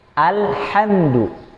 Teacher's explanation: ha-nya bersih dari tengah tenggorokan